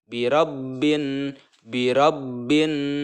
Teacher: seolah-olah alif lamnya itu tidak terbaca. Di sini memasukkan dari huruf ba ke huruf nun.